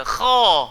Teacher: Dia mesti kena gemuk sebab sifatnya adalah meninggi. · Jangan muncul mulut sebab huruf kha tak perlu kepada bibir. Makhraj huruf kha dekat bahagian dalam, tekak di pangkal lidah. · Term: isti'la